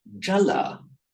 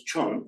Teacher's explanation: The final A gets dropped off